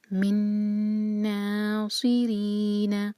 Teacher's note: را کے نیچے کسرہ تو باریک پڑھا جائے گا